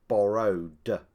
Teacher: if the last sound of the infinitive is voiced it is pronounced du as in borrowed